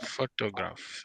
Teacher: Your stress is on the first syllable, and that gives you photograph.